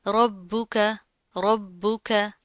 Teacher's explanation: अब यहाँ पर क्या, रॉ के ऊपर जबर है, रॉ मोटी पड़ी जाएगी, बा के ऊपर तशदीद है, मजबूती से जमा कर पढ़ेंगे, काफ बारीक है।